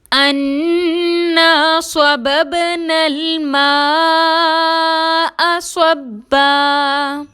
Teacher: با ساکن پر کلکلا کریں گے، نون کو لام سے ملائیں گے، بغیر جھٹکے کے ادا کریں گے. الف مدہ کے بعد حمزہ آ رہا ہے، مد ہوگی، چار حرکت کے برابر کھینچ کر پڑھیں گے. صبا میں با مشدد کو مضبوطی اور دباؤ کے ساتھ ادا کریں گے. · صاد حروف مستعلیہ میں سے ہے، موٹا پڑھیں گے اور سی ٹی کی صفت کو واضح کریں گے. با ساکن پر کلکلا کریں گے، نون کو لام سے ملائیں گے، بغیر جھٹکے کے ادا کریں گے.